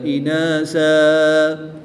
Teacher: زبر کی تنوین کو وقف کی حالت میں الف مدہ سے تبدیل کر کے پڑھیں گے۔